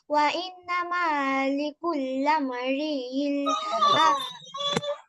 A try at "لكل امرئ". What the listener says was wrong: শব্দটা হবে লিকুল্লিম, লামের নিচে জের দিয়ে। ওয়া ইন্নামা লিকুল্লি ইমরিইম মা নাওয়া। লিকুল্লাম নয়, খেয়াল করবো।